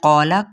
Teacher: क़ौफ को पुर पढ़ा जाएगा, हरूफ मुसालिया में से है, अलिफ हरूफ शिबा मुसालिया में से है, तो अलिफ इसके ताबे हो जाएगा, तो हम इसको पुर पढ़ेंगे अलिफ को भी।